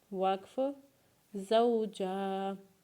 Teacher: वक्फ के बाद जीम को एक अलिफ के बराबर खींचेंगे